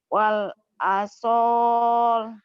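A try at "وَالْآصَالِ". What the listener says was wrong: A-nya panjang. Wal asal.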